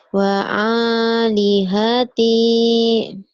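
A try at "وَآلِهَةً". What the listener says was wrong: Wa'a, jangan wa'a. Wa alihati.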